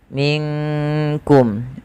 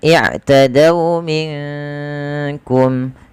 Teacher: nunnya samarkan ke huruf kaf, yang dimana kaf makhrajnya dari pangkal lidah kita beririsan dengan langit-langit yang ada di atas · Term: ikhfa hakiki